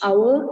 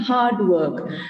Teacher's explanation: So here in the sentence, there are two words beginning with H, hour and hard work. In hour, the H is silent, whereas in hard work, it is pronounced.